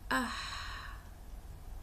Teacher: ہا کا مخرج بھی اقصی حلق ہی ہے، جیسے سکون کا سانس لیتے ہیں آہ، بہت سمپل اس کا ساؤنڈ ہے۔